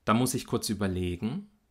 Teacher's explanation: Hauptakzent, der ist auf dem Verb, also dort auf der Silbe le. Und da gehe ich mit der Stimme ganz weit nach unten. Vorher ist die Melodie, bewegt sie sich so, dass sie nahezu linear abfällt.